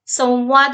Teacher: संवाद म्हणताना सुद्धा व वर विशेष त्या ठिकाणी आपण उच्चारणामध्ये स्ट्रेस येतो